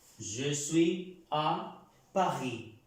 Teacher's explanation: La S no se pronuncia en la palabra París.